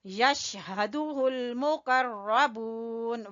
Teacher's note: واو کو کھینچیں گے مدہ کی وجہ سے، واو مدہ ہے